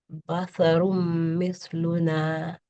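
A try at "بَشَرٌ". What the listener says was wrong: Actually, the letter over here is sheen. So basharun.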